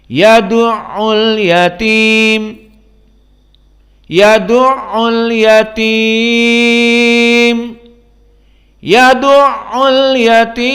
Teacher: Idan idza waqafna fi mim, jika kita berhenti di mim, kita baca dengan mad arid li sukun pilihan. Jadi ada 2 harokah, 4 harokah, ada 6 harokah.